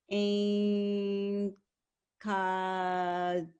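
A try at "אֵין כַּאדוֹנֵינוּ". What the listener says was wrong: Ein Kad. This letter here. That's a dalet. Kadonenu.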